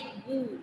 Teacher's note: बू में क्या होगा, होंठ पूरा गोल होगा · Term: पेश